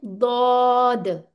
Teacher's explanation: दद वाओ की साउंड नहीं आनी चाहिए